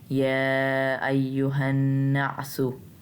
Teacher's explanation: हा को एक अलिफ इतना लंबा खींचना क्योंकि इसके आगे अलिफ है, उसके ऊपर कोई क्या कहते कोई हरकत नहीं है।